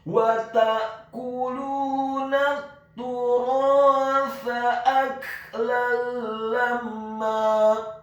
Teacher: Kata al-turatha, kata al-turatha, huruf ta-nya dibaca tipis, tarqiq ditasydidkan, ditekankan, dhammah 1 harokat. Huruf ra-nya dibaca tafkhim tebal, fathah 2 harokat karena setelahnya ada huruf alif. Dan huruf ta-nya dibaca tipis, tarqiq lidahnya agak keluar sedikit, fathah, cukup 1 harokat saja.